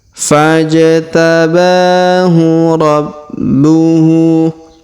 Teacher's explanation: Huruf ba atau bu berharokat tasdid, maka kita tahan dan kita tekan.